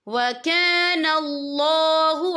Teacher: یہ دیکھیں وَكَانَ اللَّهُ، یہاں اللہ کا نام پر پڑھا جائے گا کیونکہ اللہ کے نام سے پہلے زبر ہے، اور آگے دیکھیں علیمن، میم کے پر تنوین ہے، تنوین کے بعد جو ہے ہا آ رہا ہے، اور ہا جو ہے حروف ہلکی کا ورڈ ہے، تو ہم یہ اظہار کریں گے، ہم اسے بنا غنہ کے پڑھیں گے